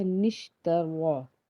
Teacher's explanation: را جو ہے را کو ہم پر پڑھیں گے کیونکہ اس کے اوپر زبر ہے